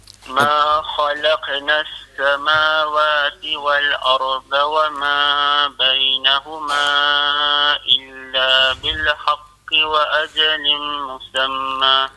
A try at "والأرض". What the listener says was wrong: Dan juga makhraj pada huruf dhad. Wal arda Dha ni dia kena tebal. Kalau wal arda tu dia jadi wal arda tu dia kurang tebal. Dia kena tebal dan sengit mulut sikit.